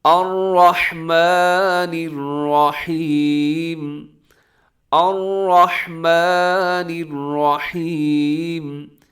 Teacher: را اس میں پر پڑا جائے گا، یعنی موٹا پڑا جائے گا